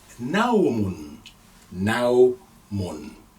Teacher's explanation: So the first letter this time is Nun with Fatha, Na. Again we have diphthong. We have the sound Ow because we have sukoon on the wow.